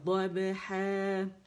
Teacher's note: ضاد کی آواز سائڈوں سے نکلے گی اور دال کی طرح ہمارے جو سامنے دانت ہے اس کے پیچھے جو مخرج وہاں سے نہیں نکلیں گے، کیونکہ دال نہیں ہے یہ، ٹھیک ہے.